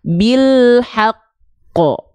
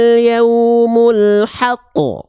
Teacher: Dia nggak langsung memantul kalau kolkolah akbar karena ada tasdid itu artinya tekan, maka ditekan dulu baru lempar pantulannya.